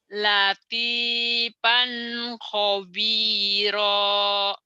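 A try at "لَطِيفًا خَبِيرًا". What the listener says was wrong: Tuh penyakit orang Sunda gitu kan, latipan. Itu F, Bu. Latipan latipan,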